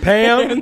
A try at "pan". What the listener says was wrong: With the N.